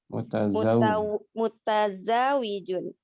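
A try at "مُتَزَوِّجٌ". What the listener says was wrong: Wawunya di tasydid mutazawijun.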